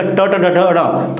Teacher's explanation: बोलने में जीभ मुड़ के चिपकती है। आप बोल के देखिएगा, ट ट ड ढ ढ, थोड़ा सा टर्न हो रहा है। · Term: मूर्धन्य वर्ग